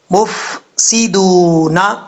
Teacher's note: سین سیٹی کے ساتھ پڑھا جائے گا، دال کے بعد واو ہے، واو کو 1 الف کی مقدار جو ہے وہ لمبا کر کے پڑھا جائے گا، مفسدون۔ ولیکن، واو پڑھتے وقت ہونٹ گول کریں گے، اگر ہونٹ گول نہیں ہوں گے تو سمجھ لیجئے گا واو صحیح طریقے سے ادا نہیں ہوا۔